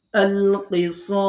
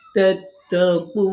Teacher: তাহলে এখন আমরা এই স যে এক আলিফ পড়তাম, এটাকে এখন আর এক আলিফ থাকলো না, এটাকে এখন এখানে সাকিন দেওয়ার কারণে এটাকে ৩ আলিফ টানতে হবে